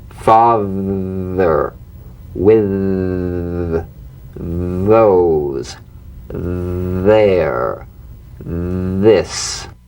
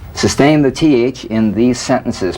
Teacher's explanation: The voiced tongue point to teeth fricative th. The vibrant sound of the voiced th has a quality much like that of the v. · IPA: /ð/